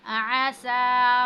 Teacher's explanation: सीन पर क्या है? खड़ी ज़बर है, इसको हमने थोड़ा सा खींचा है